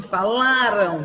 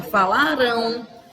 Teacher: Vai deixar de ser uma paroxítona, falaram, a sílaba forte, a penúltima sílaba, e vai passar a ser uma oxítona, falarão.